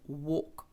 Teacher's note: w це ходити пішки прогулюватися тому що є таке цікаве правило якщо в нас є a п L а далі йде буква K або ж буква F то тоді L не читається